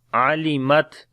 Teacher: Ain we read from the middle of the throat, on the Ta we make Shiddat and Hams quality, and on the Fa there is again Hams quality.